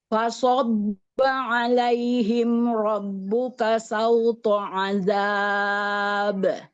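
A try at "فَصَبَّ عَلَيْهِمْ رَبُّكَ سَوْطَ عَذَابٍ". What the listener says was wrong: Ya, sauto, tebalkan lagi to-nya ya. Sauto adab.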